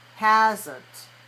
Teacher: two syllables the first one is stress the second one is weak hasn't so that's a schwa sound hasn't and for you and